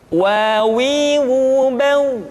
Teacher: Selanjutnya huruf wa diucapkan dengan cara memonyongkan dua bibir kita. Wa, wi, u, bau.